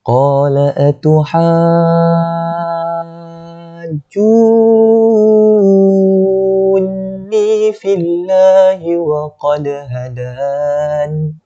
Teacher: Lafzul jalalah ni dibaca dengan nipis sebab fa tu berbaris kasrah.